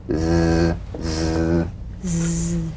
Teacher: The Z cognate S, a voiced S sound fricative. The tongue rim should gently touch the upper gum ridge.